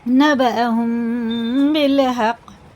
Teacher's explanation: یہ میم ساکن کے بعد با جو آتا ہے یہ اخفا شفی ہوتا ہے، یہ غنہ اور اخفا کر کے پڑھیں گے۔ نبأہم بالحق، قلقل آ گیا۔